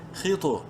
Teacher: تو میں قلقلہ بھی کریں گے کیونکہ تو ساکن ہے، اور حروف قلقلہ میں سے ہے جو کہ 5 ہیں، قاف تو با جیم دال، جب وہ ساکن ہوں ان پر قلقلہ ہوتا ہے۔